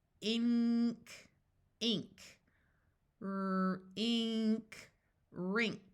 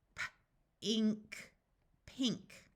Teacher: the sound sounds more like NG followed by an K